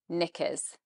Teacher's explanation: in the second syllable, we have again schwa, and you're going to go through this very quickly.